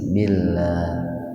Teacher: Lafaz Allah didahului oleh kasrah, jadi lafaz Allahnya dibaca tipis ya